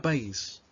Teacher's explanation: los separamos porque la vocal cerrada lleva la mayor fuerza de voz